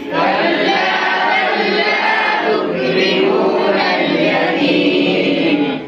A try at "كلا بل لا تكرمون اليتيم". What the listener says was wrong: यतीम इसमें नाक में आवाज यतीम नाक में आवाज नहीं जाएगी. कल्ला बल ला तुक्रिमून اليتيم.